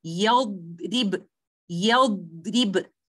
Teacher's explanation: keep my back of the tongue elevated and the compression of the sound is happening due to ittibaq. So I will say yadrib, yadrib, like this. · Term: letter dhad